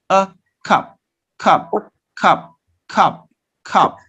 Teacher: it's a central vowel you have to open your mouth in a midway yeah a